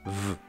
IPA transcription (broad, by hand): v